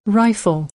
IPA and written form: ˈraɪ.f (Rifle)